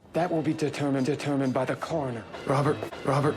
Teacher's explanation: pronounces the R's a lot in words like determined or Robert.